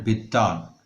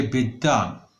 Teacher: এখানে দ কিন্তু দুটো হয়ে গেল, মানে দ্বিত্ব হয়ে গেল